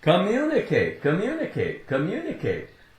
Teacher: There's no break. The way it's said, the 2 M's, really they just run together, right?